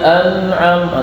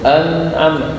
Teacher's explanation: Ketika baca an'am itu masih ada dengungnya, cuma kualitasnya udah jauh berkurang.